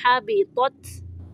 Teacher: تو کو موٹا پڑھنا ہے اور تا کو باریک